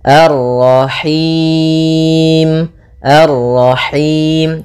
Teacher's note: Nah, ini masuk hidung tapi enggak mau, dia lepas dari yang namanya masuk hidung dan juga lepas dari namanya imalah, yaitu harus kasrah sempurna.